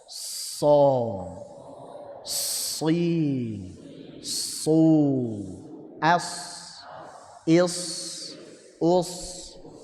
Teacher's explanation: Sekarang ditebalin, tetap tajam.